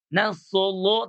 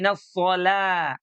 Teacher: Jangan nasolo tapi nasola, lamnya tipis.